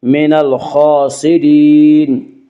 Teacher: خا کو پر پڑھیں گے، خا حروف مستعلیہ میں سے ہے